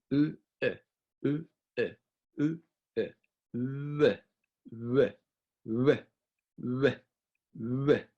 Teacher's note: So for w, we take this u sound and we say very fast after.